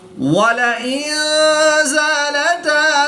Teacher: نون ساکن کے بعد زا حروف اخفا میں سے ہے تو یہاں پر اخفا ہوگا، یعنی غنہ زمانی کر کے پڑھیں گے